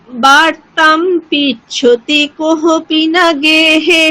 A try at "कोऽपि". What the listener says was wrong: কোহপি ওখানে হকার নেই, এটা বাংলাতে লেখা আছে, কিন্তু সংস্কৃতে কোনো হকার হয় না, এটা মুক্ত অকার।